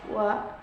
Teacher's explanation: Labiovelar sound W. This consonant sound is produced when the back part of tongue contacts the soft palate and lips also come close to each other